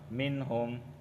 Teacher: نون ساکن کے بعد ہا آیا ہے تو یہاں پر صرف اظہار ہوگا